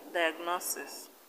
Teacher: in diagnosis the stress is on no